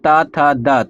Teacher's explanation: द, अब हो गया त थ द, तो द का उच्चारण कहाँ से होगा? तो सारे के सारे जो हैं त थ द में आपके दंत से ही उच्चरित किए जाते हैं